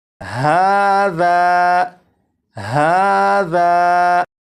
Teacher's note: اب یہاں پر دیکھیں، یہ ہے الف، الف سے پہلے زبر ہے، اور آپ کو معلوم ہے الف سے پہلے زبر ہو تو الف مدہ ہوگا، اور الف مدہ کو ایک الف کے برابر کھینچ کے پڑھتے ہیں، اور اس لفظ کو پڑھیں گے ہاذا ہاذا، تو ذال کو ایک الف کے برابر جو کھینچ کر پڑھا گیا ذا، اور اس میں یہ جو آواز ہے ذا آ، یہ الف مدہ ہے اور اپنے مخرج سے الف ادا ہو رہا ہے۔